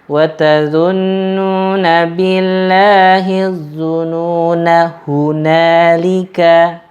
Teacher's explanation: Tapi gara-gara ada tanda seperti telur itu bulat yang memanjang ke atas, maka ketika kita membaca wasol sambung tidak dipanjangkan atau tidak dianggap ada